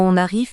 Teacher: nous trouvons une liaison dans on arrive puisque le premier mot on se termine par une consonne graphique non prononcée